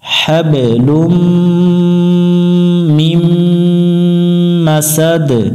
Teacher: লুম এখানে গুন্না, মিম এখানেও গুন্না, এই গুন্নাগুলো খেয়াল করে করব